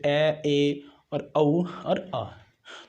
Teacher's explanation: अर्ध विवृत का मतलब होता है जिनके उच्चारण में मुखद्वार लगभग आधा खुला होता है